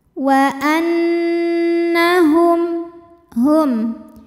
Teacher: berdengung, bunyi n tahan sampai ada suara masuk hidung, kurang lebih 2 harokat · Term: gunnah musyaddadah